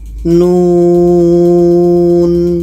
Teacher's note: Jadi kita panjangkan nu ini 6 harkat baru matikan nunnya.